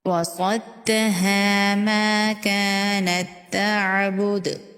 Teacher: ساکن تا کو تشدید والے تا کے اندر مشدد تا کے اندر مدغم کریں گے، ملا دیں گے، تو یہ والا تا جو ہے یہ پڑھنے میں نہیں آئے گا۔